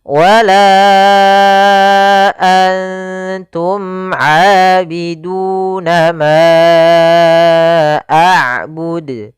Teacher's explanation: Pada lafal la kembali lagi kita dapati hukum tajwid berupa mad jaiz munfasil yaitu ditandai dengan adanya huruf hamzah yang datang setelah huruf mad di sini huruf alif. Maka kita panjangkan untuk huruf la sepanjang empat harakat.